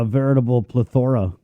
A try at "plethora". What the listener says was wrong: A plethora? You put the wrong emphasis on the wrong syllable. You threw me there.